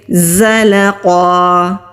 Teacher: ہمارے دانت آپس میں ملیں گے اور زبان کی ٹپ نیچے والے سامنے کے جو 2 دانت ہیں ان کے مسوڑوں پر مضبوطی کے ساتھ ٹچ کریں گے تو پھر بزنگ ساؤنڈ والی آواز آتی ہے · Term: زا